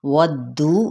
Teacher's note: واو کی زبر کو دال کے ساتھ ملائیں گے اور دال کو دبا کے پڑھنا ہے